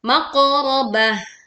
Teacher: Tak marbutoh dibaca ha sukun saat berwakof. · Qaf sukun dibaca dengan suara yang memantul dan tebal.